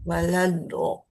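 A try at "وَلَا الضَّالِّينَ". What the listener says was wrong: Jangan walado. Kalau walado itu dal itu. Karena dia harus nempel. Kenapa? Karena dia akan huruf isti'la juga.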